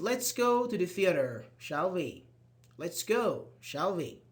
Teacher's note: And of course, with a rising intonation because you're asking.